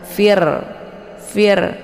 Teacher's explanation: R sukun ini dibaca e tarqi ya tipis Fir dengan cara mulutnya terbuka lebar